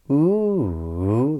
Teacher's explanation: this rise, fall, rise, that we typically use when we're in the middle of our conversations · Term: circumflex inflection